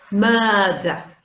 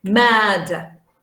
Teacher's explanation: So if you transcribe this, it could be mad. So stressed syllable, long schwa. Unstressed syllable, schwa.